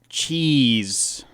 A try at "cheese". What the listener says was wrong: I think you need to go higher. higher.